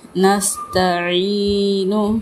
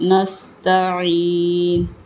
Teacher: نون کے اوپر پیش تھی، وقف میں نون ساکن ہو گیا